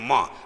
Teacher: म आप बिना नाक की सहायता से नहीं बोल सकते, आप बोलेंगे म, नाक बंद कर लेंगे, न नहीं बोल पाएंगे, ऐसे न ये अनुनासिक है।